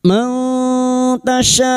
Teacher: Nun sukun bertemu ta ikfa hakiki. Kita samarkan bunyi nun sukun dan mendengung selama tiga harakat. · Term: ikhfa hakiki